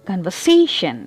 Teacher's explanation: Here the stress is on the third syllable.